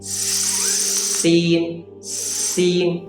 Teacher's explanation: اور سین جو ہے اس کو باریک پڑھتے ہیں اور سین کے اندر جو سیٹی ہے وہ سیٹی بھی باریک ہے